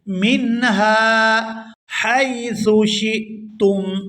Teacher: یہاں ہا کو الف مدہ کی وجہ سے کھینچ کر ادا کریں گے